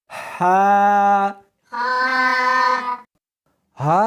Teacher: اس کو حلق میں سے نکالنا ہے اور ساتھ میں ہوا بھی ہونی چاہیے۔ ہا نہیں پڑھنی بلکہ اس کو حلق میں سے نکالنا ہے، سینے میں سے نہیں نکالنا۔